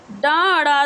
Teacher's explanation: डा और अड़ा ये ध्वनियाँ जो हैं वो कैसी ध्वनियाँ हैं? तो यह मूर्धन्य उच्छ्वित ध्वनियाँ हैं